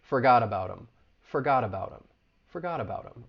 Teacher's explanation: that flap t is gonna link with the vowel sound in about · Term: linking